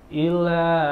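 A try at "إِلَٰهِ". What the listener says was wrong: Jangan diilkan. Ila. Jangan kepanjangan, nggak ada alisnya.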